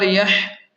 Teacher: ہا کو حلق کے درمیان سے صاف نکالیں